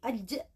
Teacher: Yang keenam ada torfiyah ghariyah, yang mana disebut juga dengan lamino palatal.